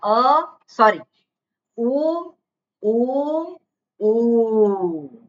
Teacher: પહેલા ઉની 1 માત્રા છે, બીજા ઉની 2 માત્રા છે અને ત્રીજા ઉની 3 માત્રા છે. એટલે માત્રિક, દ્વિમાત્રિક, ત્રિમાત્રિક. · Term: રસ્વ દીર્ઘ પ્લુત